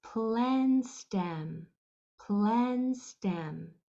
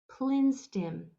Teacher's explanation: we do want a nice open E for those sounds